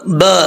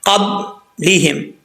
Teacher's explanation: قب لیہم, یعنی ہونٹ بالکل بند ہو جائیں گے. جب قلقلہ کریں گے ہونٹ لگیں گے فوراً جو ہے واپس لوٹیں گے. قب لیہم, لیہم نہیں پڑھنا, لام سے لی ہوتا ہے.